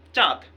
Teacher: চাঁদ একটু নাকে আসবে। একটু নাকের সাহায্যে উচ্চারণ করা লাগবে। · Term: নাসিক্য